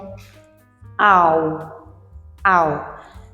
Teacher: we have the vowel a that glides and goes to the u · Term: closing diphthongs ending in u